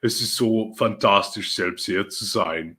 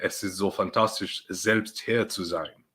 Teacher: the initial S's are pronounced as S's, whereas in German, typical German, S's, unless they're nearing the end of the syllable, are pronounced as Z's